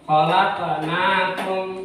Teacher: ada khalaqnakum, ada huruf ko mati, itu adalah kolkola